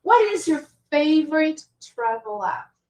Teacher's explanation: So we emphasize the word favorite.